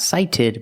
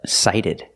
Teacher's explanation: The T is a fast D, not sighted, but sighted.